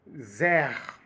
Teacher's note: você já percebe que o s no começo ele tem som de z